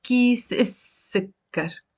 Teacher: So we're not pronouncing the lam.